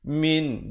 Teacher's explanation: hukum izhar halqi, bunyi saja min, jangan dipanjang ataupun didengungkan